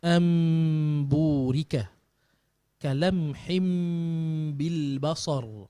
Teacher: menyembunyikan makhrajnya dengan cara bacaan bibir mulut direnggangkan sedikit dan menyempurnakan sifat dengungnya dua harakat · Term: iqlab